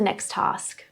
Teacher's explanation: Same consonant, one sound, held slightly longer. Never say it twice.